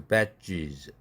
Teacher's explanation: E의 모음에 영향을 받아서 스라는 절자는 z로 유성음화 해야 되죠. 그래서 badges.